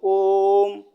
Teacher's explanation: जैसे ओम, ओम हम लोग बोलते हैं तो ओम, ओ देर से बोलते हैं और म भी देर से बोलते हैं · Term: प्लुत स्वर